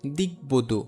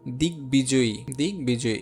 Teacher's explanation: বফলার উচ্চারণ 2 বার হয় না, অবিকৃতই থেকে যায়।